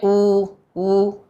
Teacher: उ वायु को निकालते हैं कैसे? ओष्ठ को गोला बना करके।